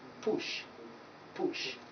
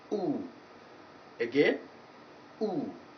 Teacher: virtually the shape of the mouth remains the same but the vowel lengthening is the only distinctive feature